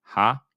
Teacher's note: our long vowel here which is our kamat that's your a as in father ha and then our y which makes the y sound as in yellow ye aha.